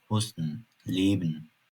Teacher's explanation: sözcüklerin veya ifadelerin sonundaki -en sesleridir. Bunlar -ın gibi telaffuz edilir.